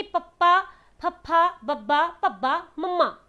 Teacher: ਇਹਦੇ ਵਿੱਚ ਪਵਰਗ ਵਾਲਾ ਸਾਰਾ ਆ ਜਾਏਗਾ, ਯਾਨੀ ਕਿ ਆਪਣੇ ਦੋਨੋਂ ਦੇ ਦੋਨੋਂ ਜਿਹੜੇ ਹੋਂਠ ਨੇ ਨਾ, ਆਪਣੇ ਜਿਹੜੇ ਬੁੱਲ ਹੈਗੇ ਆ, ਇਹ ਆਪਸ ਦੇ ਵਿੱਚ ਜੁੜ ਰਹੇ ਆ ਇਹਨਾਂ ਨੂੰ ਬੋਲਣ ਵੇਲੇ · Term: ਹੋਂਠੀ ਵਿਅੰਜਨ